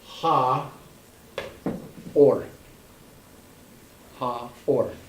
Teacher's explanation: But if it has responsibilities, it's still functioning as a consonant. It is a silent consonant. All you hear is the gap between ah and o.